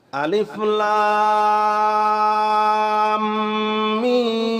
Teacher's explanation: লামকে আমি চার আলিফ টান দিয়ে মিমকে ধরেছি কতক্ষণ গুন্নাহ করেছি আবার মিম কেও আমি চার আলিফ টান দিয়েছি